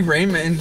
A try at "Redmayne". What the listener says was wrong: But yeah, first of all, we have been pronouncing this man's name wrong. It's Redmayne, not Raymond. R-E-D. M-A-Y-N-E.